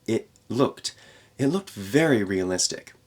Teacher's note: we have a glottal stop there for the T